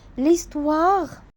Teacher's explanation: dans les deux cas soit H mué ou bien aspiré le H ne se prononce pas